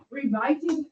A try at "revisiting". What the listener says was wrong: Okay, so the first syllable is closed. Okay, so you're saying re, and that wouldn't even be an open syllable. I want you to say, what is R-I-V? That's a closed syllable. So make that vowel, that I short. How would you say just that first syllable?